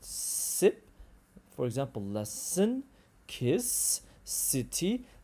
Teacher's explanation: This is when the tip of the tongue is high behind the top teeth. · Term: alveolar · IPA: /s/